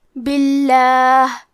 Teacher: کلمت باللہ میں حرف البا کے نیچے زیر ہے، لہذا ہم لفظ الجلالہ مطلب کلمت اللہ کے لام کو پتلی آواز میں پڑھیں گے